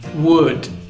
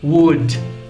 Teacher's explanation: A letra D pronunciada no verbo modal would logo ao final é bem suave.